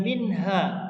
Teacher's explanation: ada fathah bertemu dengan alif, ini namanya mad tabi'i